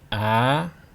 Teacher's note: And number three, think of the starting and ending point of the sound. The ending point must be higher than the starting point. Start at a neutral level so you don't have to go too high.